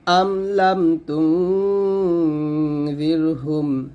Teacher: মিম সাকিনের পর লাম, মিম সাকিনের পর তা, গুণ হবে না। আম লাম তুনযিরহুম, আম স্পষ্ট, লাম স্পষ্ট।